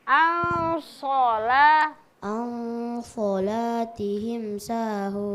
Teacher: nun sukun bertemu dengan huruf sod itu didengungkan